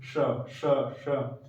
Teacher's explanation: सकार का उच्चारण च बोलते समय जीवा आपकी जहां लग रही है, च च च च बोलते समय जीवा आपकी जहां लग रही है वहीं से आप इस सकार का उच्चारण करिए